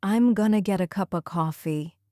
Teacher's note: Going to get a cup of almost sounds like one long word.